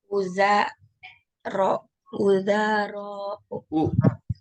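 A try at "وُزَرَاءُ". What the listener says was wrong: Ada hamzahnya potong. Wazir jamaknya apa? Wuzara'u.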